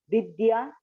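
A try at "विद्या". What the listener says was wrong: You have to make the show the difference by saying Ah.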